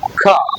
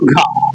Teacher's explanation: ಮಹಾಪ್ರಾಣ ಅಕ್ಷರಗಳು ಅಂದ್ರೆ ಸ್ವಲ್ಪ ಜಾಸ್ತಿ ಉಚ್ಚ ಒತ್ತು ಕೊಟ್ಟು ಹೇಳ್ತಿವಲ್ಲ ಹೆಚ್ಚು ಉಸಿರಿನಿಂದ ಹೇಳ್ತಿವಲ್ಲ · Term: ಮಹಾಪ್ರಾಣಾಕ್ಷರಗಳು